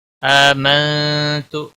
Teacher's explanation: آمنت حمزہ کے اوپر کھڑی زبر ہے، ایک الف کے برابر کھینچ کر پڑھیں گے۔ منت، نون ساکن کے بعد حروف اخفا کا تا آیا ہے، اس لیے اخفا حقیقی ہوگا، گناہ کے ساتھ پڑھیں گے۔